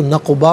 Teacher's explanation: قاف ساکن ہے لیکن حرف قلقلہ ہے تو آواز لوٹتی ہوئی محسوس ہونی چاہیے